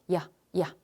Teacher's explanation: 완전 이가 아닌 형태의 이에 가까운 소리. 이런 게 바로 반모음이야. · 근데 야라고 발음할 때 여러분들이 이라고 하는 단모음에서 아로 넘어가면서 발음이 만들어져요 라고 생각하지만 실제 이에서 아로 넘어가려고 하면 꽤 번거롭고 힘들거든. 그래서 얘를 우리가 실제 완벽하게 이가 아니라 살짝 이라고 한 형태의 발음으로 소리를 흉내내어서 그 아이를 아랑 결합시켜 야라는 소리를 만들게 돼.